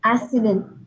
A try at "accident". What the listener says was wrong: No, not accident. You got to have the k. Just like an X, remember? What was the word we had earlier? Extreme. Extreme, right? Same with two C's. Accident. Cut the air. Accident. Accident. Say it slow. Accident. Say it slow. Accident.